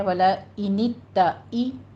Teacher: حمزہ کی نیچے دیکھیے کسرہ ہے، باریک رکھیے آواز کو